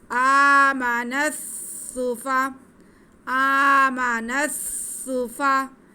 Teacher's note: नस सूफा थोड़ा रुक के मिलाएंगे क्योंकि शद है। कमा आमनस सूफा, सीन पे पेश, फा पे ज़बर, दोनों को नहीं खींचना। · नून को सीन के साथ मिला देंगे। आमनस सूफा, आमनस सूफा, नस सूफा थोड़ा रुक के मिलाएंगे क्योंकि शद है।